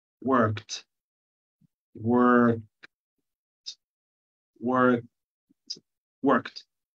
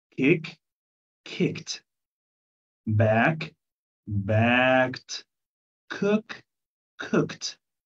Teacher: الصح هو الهاسينج ساوندز او الان فويسد ساوند او فويسلس ساوندز، الاصوات اللي هي بتعبر عن الهواء دي، لو جه بعدها اي دي، الاي دي تتحول لوحدها كده تبقى تي